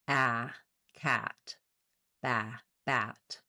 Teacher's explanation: Vowel A, our black cat vowel, is a front lax open vowel. And what that means is the front of my tongue is down behind the back of my teeth. · the front of my tongue is down behind the back of my teeth. The back of my tongue is lifted and my jaw is fairly open. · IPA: /æ/